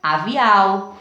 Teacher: o som do ar não sai mais pelo nariz né o aviao não tem nasalização